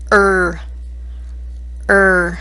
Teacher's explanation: the er sound lifts the middle of the tongue to the roof of the mouth